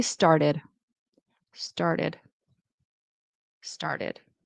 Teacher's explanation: It's not a mistake, but if you want to sound more American, I would pronounce this T as a D, as a flap T.